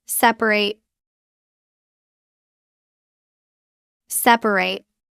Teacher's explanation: As an adjective, we drop the middle a it becomes separate two syllables and the ending sounds like rit.